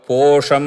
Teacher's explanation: పో ఉదాత్తము షం స్వరితం దీర్ఘ స్వరితం అవుతుంది